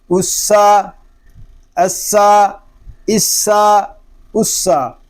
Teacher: سین میں سیٹی کی آواز آئے گی کیونکہ یہ حروف صفیریہ میں سے ہے